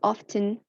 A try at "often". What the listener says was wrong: No, often. T is not pronounced. There are some people in the United States, not in Britain, that tend to pronounce T, but it's not very well regarded.